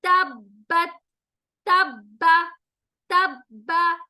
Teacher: शद को अदा करते हुए आवाज में सख्ती होगी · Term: तजदीद